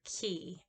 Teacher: For example, here we have the E, and it's called a point vowel. It is a high front vowel, and it's the very highest and the most front, and it is shown as a lowercase I.